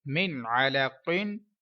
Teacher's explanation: यहाँ पर देख लें, नून साकिन के बाद हुर्फ हल्किया का आइन है, इजहार का रूल है, गुन्ना नहीं करेंगे। कौफ हुर्फ मुस्तालिया में से आया है, लिहाजा हम पूरी यानी के मोटी आवाज में पढ़ेंगे।